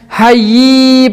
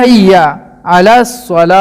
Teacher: حی نہیں ہے، حیا ہے، اور حیا کو زیادہ کھینچنا بھی غلط ہے